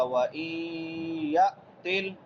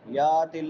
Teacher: یا کے بعد حمزہ ہے سکون والا جزم والا، تو اس کو جھٹکا دے کے پڑھیں گے. یَأْتِلْ یا تل نہیں پڑھیں گے.